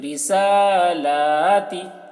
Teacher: را کو جلدی، سین لام کو کھینچ کر، کھڑا زبر ہے، تا کو جلدی کیونکہ زیر ہے